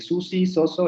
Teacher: el alveolar fricativo sordo de Susi, Soso, etc.